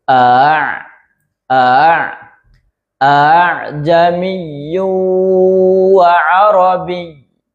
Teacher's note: a pertama jelas a yang kedua diseret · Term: tashil Hamzah